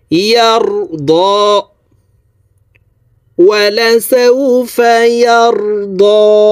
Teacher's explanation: উপরের দিকে ধাবিত করে এই দদ হরফকে 1 আলিফ টেনে পড়ব